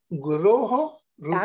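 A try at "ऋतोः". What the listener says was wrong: Samyak. Yes. Very good.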